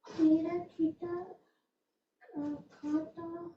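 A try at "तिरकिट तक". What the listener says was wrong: It's not kata, it's other way. Taka.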